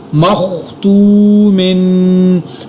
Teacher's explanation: خوا کو پر ادا کیا، واو مدہ کو ادا کیا اور میم کے ساتھ تنوین پر غنہ کیا